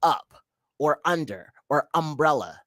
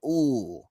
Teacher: it wasn't uh it was ooh it was pure vowel